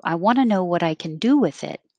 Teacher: can is not going to be perfect can it's going to get shorter to kin because the emphasis is on um the action the question do